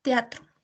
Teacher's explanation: que es la entonación de dicha palabra podemos darnos cuenta que es una entonación aparte para cada una de las de las vocales